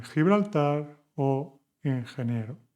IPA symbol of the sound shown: x